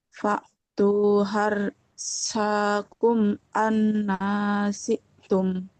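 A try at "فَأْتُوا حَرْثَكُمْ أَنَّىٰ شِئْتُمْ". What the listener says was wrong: Nah, harosakum, sa-nya fathah tidak bertemu alif, nggak boleh panjang. Fa tu harosakum, nah, nggak boleh panjang.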